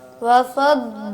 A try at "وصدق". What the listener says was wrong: سواد بیٹا سواد. سواد میں بھی سیٹی کی آواز آتی ہے لیکن موٹی ہوتی ہے آواز. وصدق وصدق وصدق سواد تھوڑا سا بہتر کریں.